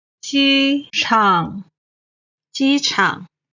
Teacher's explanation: 机 is the first tone. 场 is the third tone.